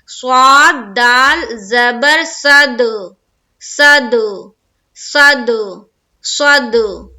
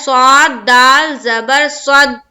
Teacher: دال حروف قلقلہ میں سے ہے، یہاں ہماری آواز رکے گی نہیں، ٹکرائے گی، ایکو ساؤنڈ آئے گا.